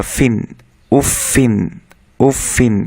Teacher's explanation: ফায়ের নিচে ইন যোগ করা ফিন, উফ ফিন, উফ ফিন। আমরা মনে রাখবো যে ফার সবসময় বাতাস বের হবে